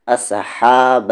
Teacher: ہا کا مخرج مڈل تھروٹ سے